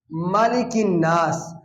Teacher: اب یہاں پہ غنہ ہے، الف مدہ ہے، غنہ کی مقدار ایک الف، اور الف مدہ کو 3 الف کے برابر لمبا کریں گے کیونکہ آگے وقف ہے